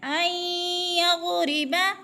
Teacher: یعنی غود پہ قلقلہ نہیں کریں گے، اس کو جلدی جلدی ادا کرنا ہے اور غود کو پر کر کے پڑھنا ہے۔